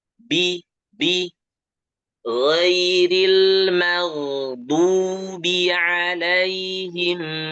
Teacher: Perhatikan dotnya tebal, huruf dot itu tebal, kemudian monyong